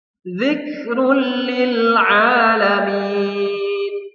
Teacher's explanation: Jadi harus dileburkan. Bunyi tanwinnya, bunyi dhammatainnya hilang atau melebur kepada lam. Jadi bacaannya zikrul lil alamin dan juga tidak boleh mendengung. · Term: idgham bila gunnah